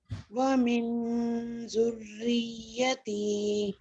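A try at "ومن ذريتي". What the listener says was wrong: من نہیں کہنا پھر می ہاں جی، ومن ذریتی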